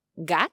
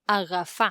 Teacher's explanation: La g puede sonar [g], como en gat ('gato'), o [γ], como en agafar ('coger')